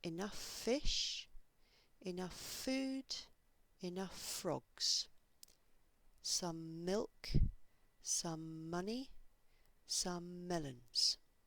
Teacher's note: the two consonants might join together and you might hear one longer consonant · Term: consonant to consonant linking